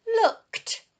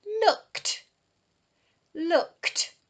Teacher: again makes the T sound because it follows the K